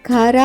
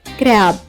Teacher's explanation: సిఆర్ఏబి పదం ఉచ్చరించేటప్పుడు సిఆర్ యొక్క ఉచ్చారణ మనం ఖరా అని కాకుండా క్ర అని తీసుకుంటాం. గమనించండి, ఉచ్చారణ కారా కాదు, క్ర అవుతుంది. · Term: సంయుక్తాక్షరం